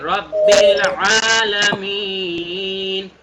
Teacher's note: এখানে আইনটা গলার ভেতর থেকে